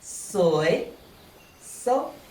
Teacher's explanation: you can change the tone of the first word from rising tone to high tone